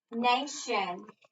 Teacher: accent is on the first syllable